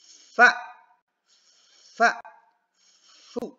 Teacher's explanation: Karena dia punya sifat yang pertama adalah hamas, udara mengalir. Kemudian rokhwah, suara mengalir pada makhrajnya. Kemudian istifal, rileks lidahnya jadi enggak main lidah ya.